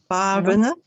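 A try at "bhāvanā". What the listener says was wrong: It should be long A in front, so bhavana.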